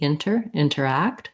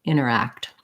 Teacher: we glance we glide over that t and basically it drops out